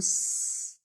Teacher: آگے ہے سین، سین جو ہے حرف صفیریہ میں سے ہے اور باریک پڑھا جاتا ہے اور جب اس کو ادا کرتے ہیں تو سٹی کی آواز آتی محسوس ہوگی